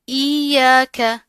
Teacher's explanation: تشدید آ رہی ہے، اس میں بھی سختی ہوگی اور ساتھ کا الف ہے، اس کو اس کے ساتھ یا کے ساتھ ملا کر پڑھیں گے، ٹھیک ہے. ایاک، اب یہ جو کاف ہے اس کے اوپر پڑی حرکت ہے، بغیر کھینچے ادا ہوگا، ٹھیک ہے، جلدی سے.